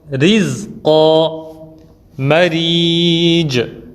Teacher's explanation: Premièrement, il y a at-tarqiq, c'est-à-dire l'amincissement, comme on appelle plus communément lire la lettre Ra bouche vide, barik